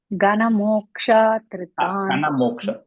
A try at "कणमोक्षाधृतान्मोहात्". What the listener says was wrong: sorry, you're saying ga. It's ka.